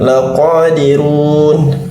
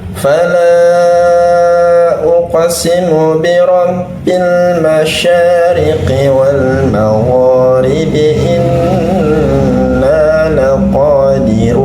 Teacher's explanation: Begitu pula pada kata laqadirun, qa, huruf qa, ya, huruf qa juga tidak dengan mengalirkan nafas, ya.